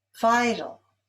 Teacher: Vital is stressed on the first syllable.